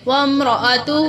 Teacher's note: الف کو نہیں پڑھیں گے، واو کو سیدھا میم سے ملائیں گے